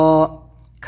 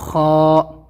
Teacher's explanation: ح، حلق سے نکالنا ہے ح۔ خا، خا تالو سے نکلنا ہے، اوپر سے جو تالو ہے وہاں سے خا، کھا نہیں ہوگا، کھا تو ہندی میں ہے، یہ ہے خا۔